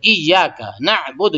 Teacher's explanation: تو اس میں جو ہے یا پہ تھوڑا سا زور لگائیں گے، تھوڑا سا، زیادہ نہیں ، بس ایاک نعبد، ایاک تھوڑا سا زور ہے، ایاک نعبد،